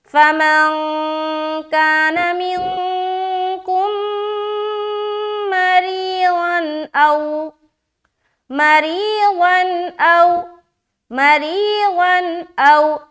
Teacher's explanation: دو زبر کی تنوین کے بعد حمزہ آ گیا. یہاں پر پھر ہم اظہار کریں گے, یعنی کہ نون کی آواز ظاہر ہوگی صرف یہاں پر.